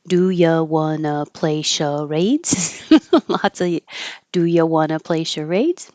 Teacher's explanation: It's a yes or no question, so it'll go up.